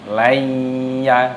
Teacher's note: nun sukun bertemu dengan huruf ya. Ini hukumnya dibaca idgham bi gunnah. Idgham itu artinya memasukkan, bi gunnah artinya berdengung.